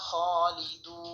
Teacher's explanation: ওকফের সময় নুন সাকিন হবে এবং এখানে তিন আলিফ লম্বা করে পড়তে হবে এখানে যে মদ হয়েছে মদের নাম তিন আলিফ মতে আর উচ্চারণ